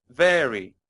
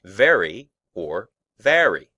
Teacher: this word has two syllables, with the stress on the first